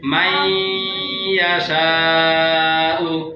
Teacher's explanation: নুনের পর ইয়া আসলে ইয়ার সাথে মিলিয়ে গুণনা হবে